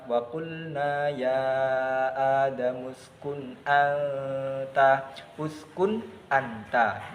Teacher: cara bacanya adalah dibaca dengan jelas dan tanpa dengung ataupun samar